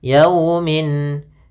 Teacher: ada fathah bertemu W sukun ini bacaan Lin lembut dalam pelafalannya